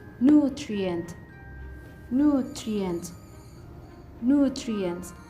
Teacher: And the stress is located on the first syllable.